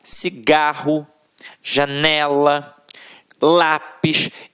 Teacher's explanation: paroxítonas em que a sílaba tônica está na penúltima sílaba · a sílaba que a gente proferiu com mais força sempre esteve na penúltima sílaba